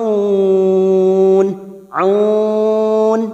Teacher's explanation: huruf ain jangan samakan dengan hamzah. Huruf ain memiliki sifat tawasud